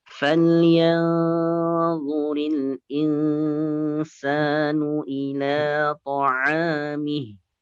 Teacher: Kemudian lamnya ila itu 2 harokat saja, jangan dipanjangkan, jangan terlalu panjang.